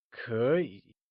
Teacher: Note that Kěyǐ is spoken in the second and third tone when together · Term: two third tones rule